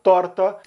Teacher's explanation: Rio Grande do Sul vai usar o R enrolado